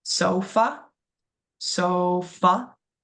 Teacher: That a at the end is going to make that uh sound making that that schwa.